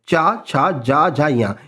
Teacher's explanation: और वे तालव्य ध्वनियां कहलाती हैं। तो च वर्ग जो पूरा है ना ये पूरा तालव्य वाला ही है।